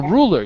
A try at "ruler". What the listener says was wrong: Ah, you're saying ruler like this. Ruler. You're rolling your tongue.